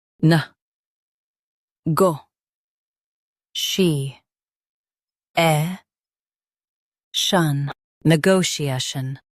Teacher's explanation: Stress go and keep shun light and quick.